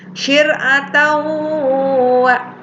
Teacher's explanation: Bacanya dimasukkan dan disertai gunnah. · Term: idgham bi gunnah